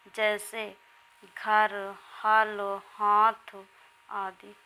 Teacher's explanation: इसमें अनुनासिक और अनुस्वार की ध्वनि का संयोग नहीं होता है। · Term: निरनुनासिक